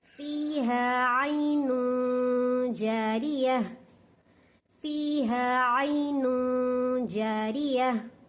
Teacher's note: फी थोड़ा खींचना, 2 हरकत के बराबर, हा को भी 2 हरकत के बराबर खींचना